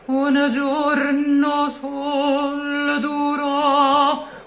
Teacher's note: Try to skip altogether the S of sol and the R of duro.